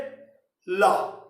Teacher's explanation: एक वर्ण ऐसा है जिसके जिह्वा को बोलने में फ्रंट नहीं लगता, उसका पार्श्व लगता है, जैसे ला। ला बोलते समय हम गलती करते हैं, जिह्वा का ये भाग तालू से लगा देते हैं, आपका ला स्पष्ट नहीं निकलेगा। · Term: पार्श्विक वर्ण